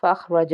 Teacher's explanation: فَأَخْرَجَ، پہ حلقی کا حرف ایک تو ہے، یعنی کہ اس کو ہم حلق کے اوپر والے حصے سے ادا کریں گے، اور دوسرا یہ حرف مصالحہ کا حرف ہے، اس کو پر پڑھیں گے۔ را ہے، را کو بھی ہم پر پڑھیں گے کیونکہ اس کے اوپر زبر ہے